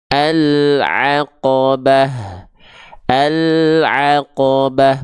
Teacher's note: Huruf ain dilafalkan dari bagian tengah tenggorokan, kalau hamzah dilafalkan dari bagian pangkal tenggorokan. Sama-sama tenggorokan, cuman beda titik artikulasinya.